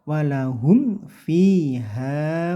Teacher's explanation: mim sukun bertemu fa, ini namanya idhar, idhar syafawi, tidak boleh dibaca dengung